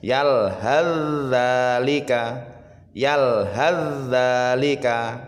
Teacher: Akan tetapi jika kita teruskan atau kita wasolkan, sa-nya ini harus dimasukkan ke zal, sahabat ya. Otomatis suara sa ini dia hilang ya, masuk ke zal, seolah-olah sa-nya tidak ada ya. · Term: idgham mutajanisain